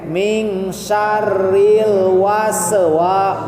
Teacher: Nah, pada was tahan, tidak ada pantulan. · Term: sin sukun